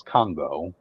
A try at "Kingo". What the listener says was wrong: Kingo. It's just an I.